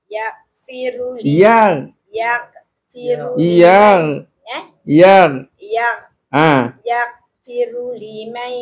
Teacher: Bila huruf gin dia tidak ada detakan melainkan huruf istilah yang berdetak ialah huruf ta dengan huruf qaf.